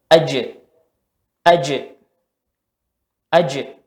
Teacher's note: Ada pantulan yang keluar dari huruf tersebut ya, di tengah lidah. Posisi jim itu di tengah lidah ya. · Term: qalqalah